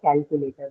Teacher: among those four syllables, my first syllable cal that is uh stressed